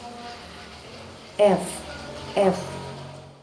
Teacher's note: b itu dihalangi oleh dua bibir b b m nah sedangkan kalau huruf f dihalangi oleh bibir bawah dan Gigi atas